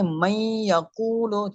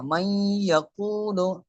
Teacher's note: من یقول، یہ نون ساکن ہے، نون ساکن کے بعد یہ یا آ رہی ہے حروف یرملون میں سے آ رہا ہے، تو یہاں پر ادغام ہوگا، ٹھیک ہے، اور گننا بھی ہوگا